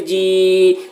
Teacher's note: یا ساکن سے پہلے زیر ہے، یا مدہ ہوا، اس لیے یا مدہ کو ایک الف کے برابر کھینچ کر پڑھیں گے